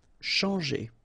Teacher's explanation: When you combine this C and H, you get the sound sh. And after that, you've got your nasal en, chan